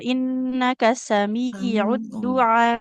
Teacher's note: Jadi ditekan panjangkan dulu ainnya. Heeh. Baru hamzah kan hamzah sukun.